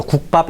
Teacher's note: 성대에 긴장이 발생이 되니까 다음에 오는 발음을 발음할 때 자연스럽게 힘이 그쪽으로 쏠려버려. 그래서 된소리가 되는 거예요. · 기역, 디귿, 비읍이 받침에 오잖아요. 그러면 소리가 막혀. 성대에 긴장이 발생한다는 얘기야. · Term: 경음화